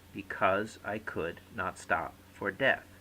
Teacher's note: every other syllable is naturally stressed